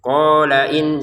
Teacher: Qala 2 harokat qafnya ya. Lamnya tidak panjang, langsung ke hamzahnya.